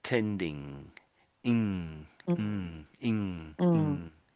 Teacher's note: When you see these two letters together, pretty much anywhere in a word, you're making a one sound, not two sounds, but one sound. It's this nasal sound.